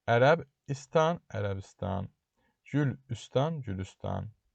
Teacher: Stan şəkilçisi də öz növəsində iki kər samit yanaşı gəldiyi üçün, yəni S ilə T samiti kər samiti yanaşı gəldiyi üçün T özünün çingitli qarşılığı D-ya çevrilir.